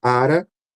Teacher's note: Esse R, ele realmente é muito rapidinho. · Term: R bem rápido